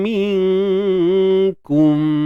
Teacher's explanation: Dan dengung kat sini kita nipiskan sahaja kerana huruf kaf memang huruf yang nipis, ya. Dan kalau bila bincang tentang martabat, ianya berada pada martabat adna, paling rendah sekali lah, sebab dia jauh dengan makhraj nun mati tu. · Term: ikhfa haqiqi